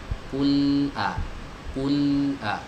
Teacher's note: Bainiyah itu suaranya dialirkan sedikit ya.